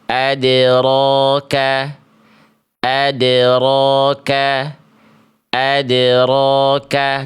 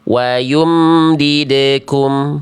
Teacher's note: Jadi ada space jarak antara bunyi dal dengan ro. Harusnya nyambung aja pantulannya. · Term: kolkolah